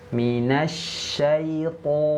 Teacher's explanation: Pertama dia bunyinya bulat ya, bergema. Vokalnya o. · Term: huruf tebal